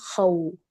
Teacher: خو ہم نے اس کو پر کیا اور او ہم نے واولین کی آواز نکالی